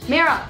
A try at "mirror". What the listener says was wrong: I can't even hear the other two R's in what you're saying.